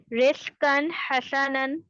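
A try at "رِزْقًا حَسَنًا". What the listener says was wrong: काफ को पुर करें, रिज़्क़न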